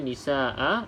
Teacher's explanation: nisaa dan juga Maa perlu dibaca dengan dua harakat juga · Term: Mad iwad